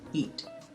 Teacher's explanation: when you pronounce the T in eat it kind of flicks off the roof of your mouth